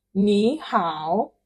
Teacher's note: So even though it is written ni hao, you pronounce it ni hao, this ni changes to second tone, which is ni, sort of ni.